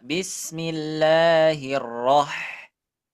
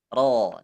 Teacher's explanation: Jangan ra, tapi ro. Dia harus tebal.